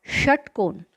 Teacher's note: षट्कोण इस शब्द में श का उच्चारण करते समय जिह्वा का स्पर्श मूर्धा को होना चाहिए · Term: मूर्धन्य वर्ण